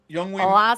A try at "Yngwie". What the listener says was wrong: I don't think you pronounce the Y. Yngwie Malmsteen, I'm pretty sure. The Y, I don't think they, maybe they don't. I don't think they pronounce the Y.